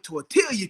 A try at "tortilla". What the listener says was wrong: Tortilla, you said the L.